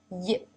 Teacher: Here I have not drawn the tongue pressing all the way to the roof of the mouth because the center part of the tongue is actually leaving room for air to pass through. So the sides of the top of the tongue are pressing the sides of the roof of the mouth, leaving a small passageway down the center.